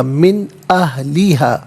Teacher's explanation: من میں نون ساکن ہے، اس کے بعد حرف حلقی حمزہ آ رہا ہے تو نون ساکن کو اظہار کے ساتھ پڑھیں گے، غنہ یا اخفا نہیں کیا جائے گا